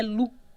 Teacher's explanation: tá escrito um p ali tá mas a pronúncia é Lu você não fala esse P